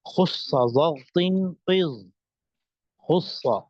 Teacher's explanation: خص، اب ان میں تمام حروف وہ ہیں کہ جن کو جب ادا کیا جاتا ہے تو زبان کا جو آخری حصہ ہے وہ اوپر تالو کی طرف اٹھتا ہے اور آواز کو موٹا کر دیتا ہے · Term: حروف مستعلیہ